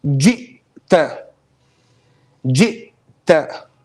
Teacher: In the Hamza, the sound totally stops, okay? It's total stoppage of sound. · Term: glottal stop